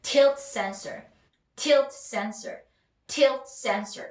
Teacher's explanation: 어디에 힘 들어가죠? 앞에 명사 힘이 들어가고 이어준다.